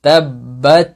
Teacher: তাব্বাত, বাত নয়, বাত, বাত, তায়ের মাখরাজে গিয়ে শুধু আপনি মুখের ভিতর থেকে বাতাসটা বের করে দিবেন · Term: হামস